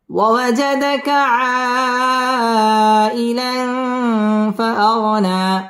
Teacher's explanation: আই মধ্যে মুত্তাসিল চার আলিফ টান দিয়ে পড়তে হবে